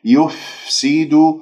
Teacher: والفاء ساكنة تتجلى فيها الصفات واضحة من جريان للنفس الهمس وجريان للصوت الرخاوة